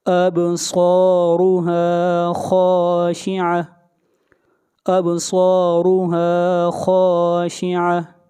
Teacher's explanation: خا بھی حروف مستعلیہ میں سے ہے، خا کو موٹا پڑھا جائے گا